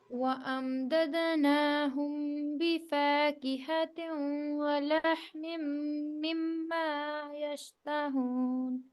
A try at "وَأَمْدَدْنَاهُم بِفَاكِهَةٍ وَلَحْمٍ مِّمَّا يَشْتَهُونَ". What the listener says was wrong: Okay یہ خیال رکھنا ہے میم کے بعد میم ادغام شفوی. ٹھیک ہے یہاں پہ کھینچ کے غنہ اچھے سے ادا کرنا ہے. پھر یہاں پہ بھی دوبارہ ایسے ہی آیا تھا میم کے بعد میم تو تھوڑا شارٹ غنہ تھا. ٹھیک ہے اس کو بھی کھینچنا تھا. پھر میم کے بعد با تو یہ بھی اخفاء شفوی ہے.